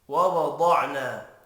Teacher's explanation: ضاد حروف مستعلیہ ہے، پر پڑا جائے گا، الف مدہ کو ایک الف کے برابر کھینچ کر پڑھیں گے۔